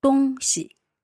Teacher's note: 东, first tone. Yep. 西, neutral tone.